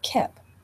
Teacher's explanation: If the word is skip, they're likely to leave off the s and just say kip. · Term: cluster reduction